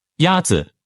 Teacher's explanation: The first tone is a high-level tone.